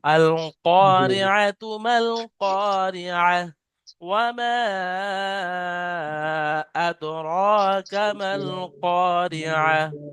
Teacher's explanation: মাদ্দা মুনফাসিল, 2 থেকে 3 আলিফ পরিমাণ টান দিতে হবে, তাহলে একটা একটু বেশি করে টান দিতে হবে।